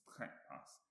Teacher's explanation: So trekpas, the first syllable is stressed. So it's not trekpas, it's trekpas.